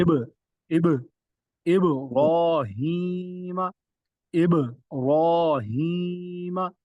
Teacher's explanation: یہاں پر با میں کلکلا ہو رہا ہے، کلکلا خوب ظاہر ہو رہا ہے اور آگے را جو ہے وہ پر ہے